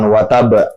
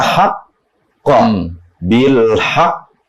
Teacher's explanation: jadi ditahan dulu baru muncul Q Qalqalah